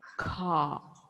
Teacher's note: in British accent, there is no R or there is no R. It is only ah.